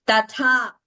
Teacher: the first tha is Alpaprana, second tha is Mahaprana. And we must chant only in that way. We should not interchange.